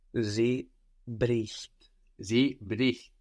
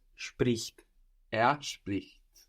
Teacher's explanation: The E gets crushed into an I when we add our T.